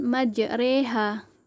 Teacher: Di sini hukum bacaannya yaitu imalah, sebab dibaca miring pada huruf kasroh sehingga berbunyi e